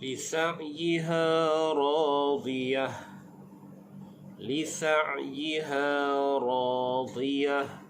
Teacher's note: Pada sebutan huruf ain, makhrajnya di tengah kerongkong.